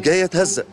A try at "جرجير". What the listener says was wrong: بتنطق جيم. طب معلش قول جرجير. جرجير.